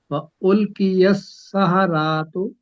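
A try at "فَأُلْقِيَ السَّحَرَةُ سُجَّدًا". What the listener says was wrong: سحراتو، را کو لمبا نہ کریں.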